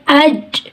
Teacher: تو میں جب اج پڑھ رہی ہوں تو کیا ہوا, جو ہے زبان کا درمیانی حصہ اوپر کے تالو کے ساتھ چپک گیا اور آواز بند ہو گئی اور کیا ہوا, اس میں سختی پیدا ہو گئی, اس میں شدت پیدا ہو گئی. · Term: صفت شدت